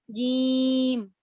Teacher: اپنی زبان کا جو میرا وسط لسان ہے، جو شجر اللسان ہے، اس کو میں نے ٹچ کیا ہے اوپر والے نرم یا سخت تالو پر، تو پھر میری اس طرح کی ساؤنڈ نکلی ہے.